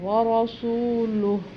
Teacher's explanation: یہاں پر سانس لیں گے تو پھر اس کو ہا کو ساکن کر دیں گے